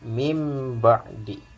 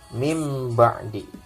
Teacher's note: Nah, nunnya berubah menjadi huruf mim. Ya, karena menghadapi huruf ba. Nah, ini di hukum tajwidnya adalah iklab.